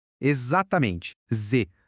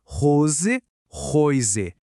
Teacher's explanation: Se o s vier antes de uma vogal, como naquelas palavras rose e rise, ele vai ter som de z.